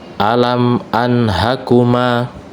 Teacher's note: Di sini ada nun sukun bertemu dengan huruf ha, maka nun sukun dibaca jelas.